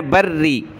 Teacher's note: را کو سخت کریں گے لیکن را کے نیچے زیر ہے تو باریک پڑھنا ہے